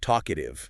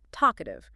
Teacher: Listen to how the emphasis pushes forward right from the start